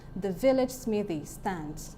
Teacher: the is unstressed, vil is stressed, lidge is unstressed, smith is stressed. The Y in smithy is unstressed, and then stands is stressed.